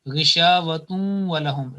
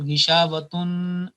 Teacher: in idgham, the noon sakin or tanween, it loses its 50% full nasal sound